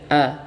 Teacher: dibaca fathah A dan dibaca tipis ya tidak dibaca tebal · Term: Hamzah washol